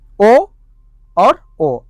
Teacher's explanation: ओ दौतो कंठोष्ठम यानी कि इनका उच्चारण स्थान कंठ और ओष्ठ है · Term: कंठोष्ठ वर्ण